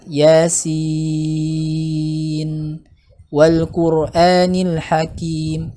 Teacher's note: Adapun kadarnya ya tentu nanti menyesuaikan dengan tempo cara bacanya ya. Tapi sepakat para ulama membaca sin itu dibaca 6 harokat ya, dibaca 6 harokat, makanya dia masuk ke dalam mad lazim ya.